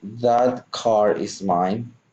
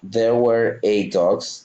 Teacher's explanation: words that are spelled with R at the end and use the R sound to link the next word if that word starts with a vowel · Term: Linking R